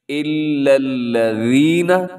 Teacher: لام کے اوپر تشدید ہے تو شد والا حرف مضبوطی سے پڑھتے ہیں